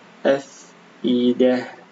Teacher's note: jika waqaf di sini maka ta ini berubah menjadi huruf ha ya